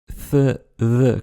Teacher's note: Dentale, avec la pointe de la langue au niveau des dents. Th, the, comme en anglais.